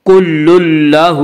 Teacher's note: تنوین کے بعد لام آ رہا ہے اس لیے بغیر غنہ کے ملا کر پڑھیں گے، یعنی غنہ نہیں کریں گے ، اسے ادغام بلا غنہ یا ادغام تام کہا جاتا ہے۔